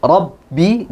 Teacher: makhraj ba ya. Dia di dua bibir ketemu. Dua bibir. Rabbi, jangan sampai ke mim, bergeser ke makhrajnya mim.